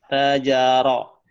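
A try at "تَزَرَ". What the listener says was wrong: bukan tajaro, tazaro, zal,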